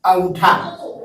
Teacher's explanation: पहले है अनुनासिक, इसे चंद्र बिंदु से दिखाते हैं और इसका उच्चारण में मुंह से सांस ज्यादा निकलती है और नाक से कम